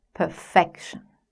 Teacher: In 'perfection', the second syllable is stressed